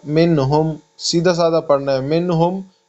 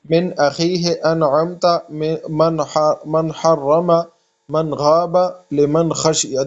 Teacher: بغیر غنہ کے ظاہر پڑھنا، یعنی سمپل طریقے سے پڑھنا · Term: اظہار